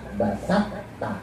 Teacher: Jadi to kalau ketemu ta itu diidghamkan. Ya, jadi to-nya dimasukin ke ta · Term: idgham mutajanis